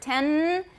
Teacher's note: Alveolar. So we're just touching the alveolar ridge for 10 because there's no th there to make us want to stick out our tongue